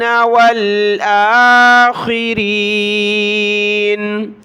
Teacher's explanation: حمزہ کے اوپر کھڑا زبر ہے، ایک الف کی مقدار اس کو اوپر کھینچنا ہے